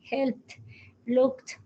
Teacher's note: Es como que entonces la E y la D como que se pierde a una T.